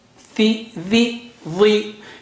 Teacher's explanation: thi still is very thick and high, but because of kasra effect, the thickness is decreased. Tha is very thick and high, but thi will decrease its thickness, but it's still distinct.